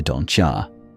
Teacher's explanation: Assimilation. Adjacent sounds morph. Don't you turns into don't ya.